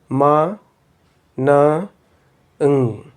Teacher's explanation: these three sounds are called nasal sounds because they come out through the nasal cavity, and the oral cavity is closed, and the nasal cavity is open when you produce these sounds